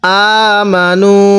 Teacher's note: আমি হামজার মধ্যে টান দিছি, মিমের মধ্যে টান দেই নাই